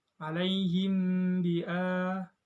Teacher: Cara bacanya samar-samar di bibir disertai dengan dengung. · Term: ikhfa syafawi